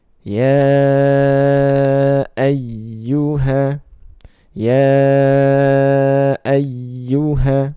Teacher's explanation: Jadi kata ya dan ayyuha, maka dibaca panjang 4 harokat